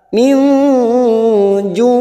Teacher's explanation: nun sukun bertemu jim ikhfa hakiki, kita samarkan bunyi nun sukun 3 harokat